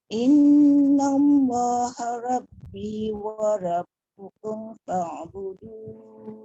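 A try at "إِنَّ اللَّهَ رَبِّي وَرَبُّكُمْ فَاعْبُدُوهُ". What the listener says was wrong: Tebal sikit bunda dekat roh. Innallaha rabbi wa rabbukum fa'budu.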